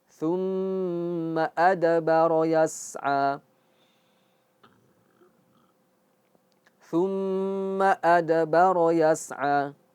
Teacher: Ini mim tasydid dia harus ghunah dan khaisyum yaitu masuk masuk ke hidung.